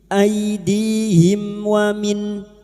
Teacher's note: nun sukun bertemu kha idhar halki, nun sukun dibaca jelas tanpa mendengung